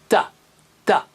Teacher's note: जबान की नोक को ऊपर के दांतों की जड़ से मिलाएंगे